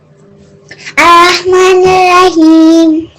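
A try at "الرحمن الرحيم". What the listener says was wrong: جو پہلے والا ہا ہے وہ بہت اچھا ہے. جو دوسرا والا ہا ہے تھوڑا سا وہ لیزی ہو رہا ہے. الرحمن سیم آپ نے ساؤنڈ دینی ہے. الرحمن الرحیم ناٹ ہیم لائک حیم.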